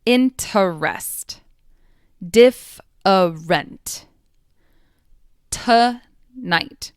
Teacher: All of them have unstressed schwas, unstressed sounds.